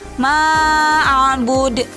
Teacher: apabila huruf qalqalahnya sukun karena diwakafkan, maka pantulannya lebih kuat. Contoh di dalam surat Al-Kafirun yaitu ma'bud, yang menjadi contohnya yaitu karena ada huruf dal diwakafkan di akhir kalimat. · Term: qolqolah kubro, qalqalah kubro